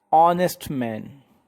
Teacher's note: Here honest is started with the h, but h is silent here.